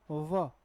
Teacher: labio dental का meaning क्या हुआ ऊपर के दांत और नीचे का होठ